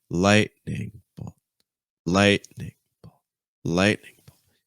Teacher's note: I stress light and I just go lower and lower in pitch. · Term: compound noun